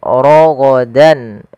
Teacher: Kemudian pada lafal ha ada mad tabi'i lagi, fathah bertemu alif, raghadan. Ra tebal, ya, ra tafkhim, raghadan.